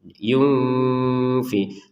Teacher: Kalau nun sukun bertemu fa ini kita bacanya dengan samar